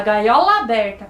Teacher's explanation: Só que quando a gente lê gaiola aberta, você não lê separadas as duas palavras, a gente faz uma junção, né? A gente fala gaiola aberta, parece que é um A só. Então aqui nós vamos contar a sílaba lá do gaiola com a sílaba A do aberta, porque a gente fala essas duas sílabas juntas como se a palavra fosse uma só.